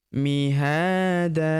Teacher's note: Tanwin an kita hilangkan, kita rubah menjadi fathah dan kita panjangkan dua harokat. Alifnya tidak dibaca ya.